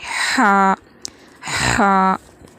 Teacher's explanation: اور ہا ادا ہوتا ہے حلق کے بیچ والے حصے سے۔ حلق کے 3 حصے ہوتے ہیں، اس کے بیچ والے حصے سے جو ہے ہا ادا ہوتا ہے، ہا، ہا۔